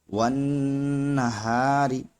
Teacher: فی قرطاسن، واو نون زبر ون، نون زبرنا ون، ہا الف زبر ہا ونہا، را زیر ری ونہاری. یہاں پر را پہ زیر ہے اس لیے را باریک ہوگا